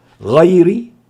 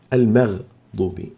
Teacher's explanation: والغين في غير هي حرف استعلاء مفتوح، والمغضوب الغين هنا ساكنة، فتفخيم الغين أقل من تفخيم غير المفتوحة، غير المغضوب، كلاهما مفخم، لكن تفخيم غير أعلى من تفخيم المغضوب لأن الأولى مفتوحة والثانية ساكنة